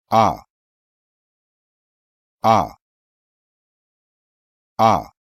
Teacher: The vowel sound A is an open front and rounded vowel. A is an open vowel sound because the jaw has to adopt an open position during its articulation · A is an unrounded vowel sound because the lips are in a neutral position during its articulation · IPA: /a/